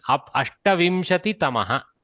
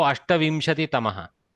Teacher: There is no visarga in between.